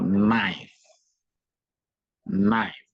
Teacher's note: you don't pronounce the k but you stress the N